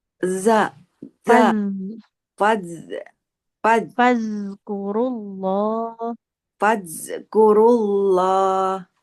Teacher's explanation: Coba ibu huruf dalnya ujung lidahnya nempel ke ujung gigi atas.